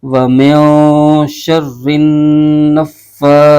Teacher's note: را کو نون کے ساتھ ملائیں گے، یہاں غنہ بھی ہو جائے گا، اور پھر نون کو فا کے ساتھ ملائیں گے، یہ تینوں مشدد حرف کو ایک دوسرے کے ساتھ ملائیں گے۔ فا پر کھڑا زبر ہے، اس کو ایک الف کھینچیں گے، سا پر کھڑا زبر ہے، اس کو بھی ایک الف کھینچ کے پڑھیں گے، اور تا کے نیچے زیر ہے، اس کو بغیر کھینچے پڑھیں گے۔